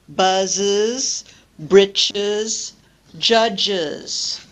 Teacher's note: using schwa, the vowel sound schwa, to break up clusters with s. That's why when we produce the third person singular, classes, we insert the vowel sound.